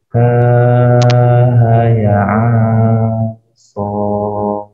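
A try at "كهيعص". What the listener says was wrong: Kalau baca kaf ha ya so, itu bukan sebagaimana namanya. Kalau sebagaimana namanya, kaf ha ya ain, dia bukan a. Sebab huruf tu nama dia ain, bukan ka ain.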